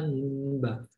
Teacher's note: Keluar mimnya ada di bibir, dua bibir, syafawi. Bibir atas dan bibir bawah itu bertemu dengan ba. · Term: ikhfa syafawi